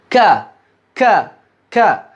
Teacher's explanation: Ketika berharokat, yang menjadi pembeda, salah satu pembeda yang tegas antara huruf kaf dengan huruf qaf, huruf kaf diucapkan berhembus udara